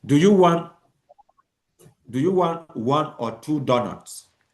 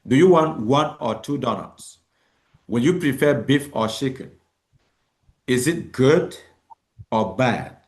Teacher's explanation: Pitch rises on the first choice and fall on the second choice. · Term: choice intonation